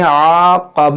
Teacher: आइन अलिफ ज़बर आ, ये अलिफ मद्दा खींचेंगे